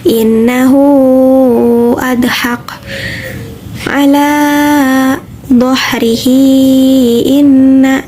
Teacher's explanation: Mad silah tawilah atau mad silah panjang ialah mad silah pendek diiringi oleh hamzah. Panjangnya 2-5 harokat.